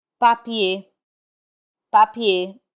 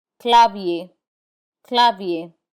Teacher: We do not pronounce the R in IER. Instead, it has the A sound.